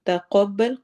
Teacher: تقبل قاف کو موٹا پڑھنا ہے.